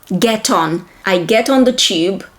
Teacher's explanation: in this case you hear the T because you have a vowel